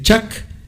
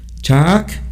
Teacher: no es lo mismo, por ejemplo, decir chac con una vocal corta, que es rojo, chac con la vocal larga, que es hervir